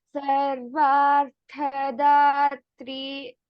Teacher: In Sarvarthadatri, Tha is a Mahaprana. The first Tha is a Mahaprana.